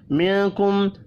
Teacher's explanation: نون ساکن کے بعد کاف ہے، اخفاء حقیقی ہوگا